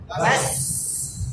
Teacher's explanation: বাস এই যে এই সাউন্ডটা লম্বা হয় ঠিক আছে না সাউন্ড সিন যখন সাকিন হয় সিনের সাউন্ডটা কি হয় সামান্য সময় কন্টিনিউ হয়